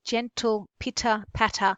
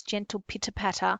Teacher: you have that repetition of the T sound and the short, crisp vowel sounds, gentle pitter patter, and the P's are almost spat out, and you have this.